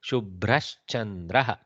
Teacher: Bha is Mahaprana but not cha, so I should be very careful.